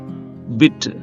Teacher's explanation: ఈ అంటే ఇది ఫ్రంట్ కి ఉంది అలాగే క్లోజ్ కి దగ్గరగా ఉంంది అంటే నియర్ క్లోజ్ అన్నమాట ఫ్రంట్ నియర్ క్లోజ్ అన్నమాట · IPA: / ɪ /